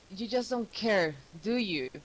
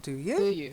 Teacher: so even though that question mark is there and it belongs there it's an attack so it doesn't take that Rising intonation